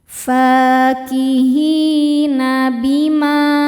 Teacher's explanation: cara bacanya huruf Ha panjang dua harakat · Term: mad thobi'i zohiri